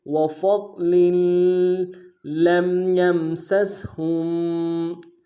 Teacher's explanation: لام کو میم ساکن کے ساتھ ملانا ہے، میم ساکن میں غنہ کریں گے · ساتھ ملانا ہے، ضاد موٹا حرف ہے، موٹا ادا کریں گے، لام کی تنوین کو اگلے لام کے ساتھ ملانا ہے، اگلے لام کے اوپر تشدید ہے، غنہ کرتے ہوئے ملائیں گے